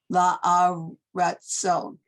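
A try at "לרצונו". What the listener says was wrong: No, it's this blends, these two blend, not la, it's li,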